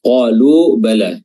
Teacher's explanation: huruf qaf makhrajnya di pangkal lisan dan diangkat bertemu dengan langit-langit lunak bagian dalam, dan dia memiliki sifat isti'la, sifat yang tebal.